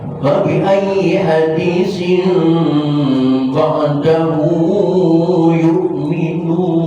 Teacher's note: tanwin ketemu ba, hukumnya iqlab. Iqlab itu suara mim. Maka di sini ada tanda mim.